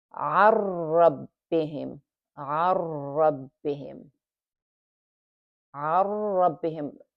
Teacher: you have to hold it for 2 beats here because you have the ra with shadda on it, so you have to give the space for that.